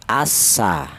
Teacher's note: Ini yang dinamakan idgham samsiyah. Cara bacanya al ini langsung masuk ke huruf sin.